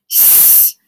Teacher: well it's unvoiced I don't feel it vibrating and it's continuous